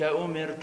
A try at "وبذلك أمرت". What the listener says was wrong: أمرت رقق الراء